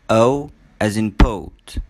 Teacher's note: In pronouncing the sound O as in poet, the lips. The lips are very rounded and tense. The tongue is a bit tense and it moves from a mid position to a high position.